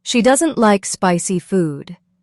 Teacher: The stress was on doesn't, like, and spicy.